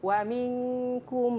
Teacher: baca dengan betul itu dengung dengan kadar dua harakat